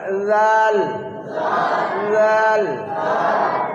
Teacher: জাল হবে না, তোতলা হবে, জিভের ডগা আর উপরের দাঁতের কিনারা